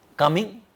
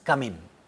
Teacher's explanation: sometimes it is pronounced as ng as a velar nasal, and the other time it is just probably dental or alveolar nasal